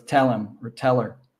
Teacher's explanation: And tell him, if it's always, we always combine the verb plus the pronoun. So him and her, the H sound always drops out.